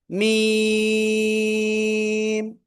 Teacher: 2 ঠোঁটের বাইরের অংশ, শুকনো জায়গা থেকে উচ্চারিত হবে।